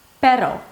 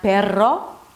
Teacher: this really light tap, not a long trill